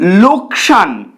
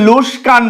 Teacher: যেখানে সঠিক শব্দে ক আগে রয়েছে স পরে রয়েছে কিন্তু ভুলভাবে উচ্চারিত হয়ে স আগে আসছে ক পরে চলে যাচ্ছে